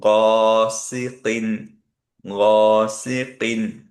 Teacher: এর জন্য এটা আমরা হয়তো বেশ কয়েকবার সেপারেটলি প্র্যাকটিস করবো, যাতে আমাদের টাংটা একটু ইজি হয়ে যায়। কারণ কি, গ একটা হেভি লেটার, তারপরে সি আবার হালকা লেটার, আবার কফ একটা হেভি লেটার। সো এইটা পুল অফ করা মাঝে মাঝে একটু কঠিন হয়।